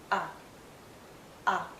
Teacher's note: it's a very short sound and also a very relaxed sound